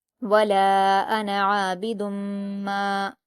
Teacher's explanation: تنوین کے بعد میم ہے تو یہاں ادغام یرملون کا قاعدہ ہے اور میم مشدد ہے تو غنہ کے ساتھ پڑھا جائے گا۔